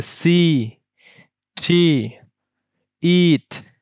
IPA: iː